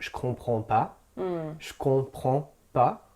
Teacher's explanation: The je can become a sh sound. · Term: la chute du e